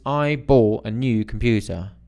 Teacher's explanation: it's a general statement so it doesn't rise it's not going up